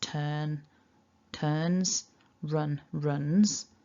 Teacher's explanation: Basically, anytime you've got a verb that ends in a n sound, the third person singular, although it's written with an S, it will be pronounced with a Z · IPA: /nz/